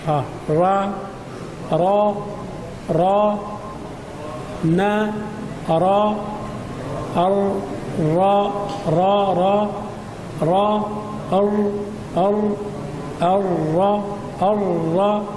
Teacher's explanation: لا باس اخبر ان مخرج الراء يقارب مخرج النون النون الرا وافاد ان مخرج الراء ادخل في ظهر اللسان